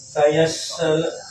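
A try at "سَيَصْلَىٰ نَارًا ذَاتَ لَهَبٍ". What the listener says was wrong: Pakai so, jangan sin.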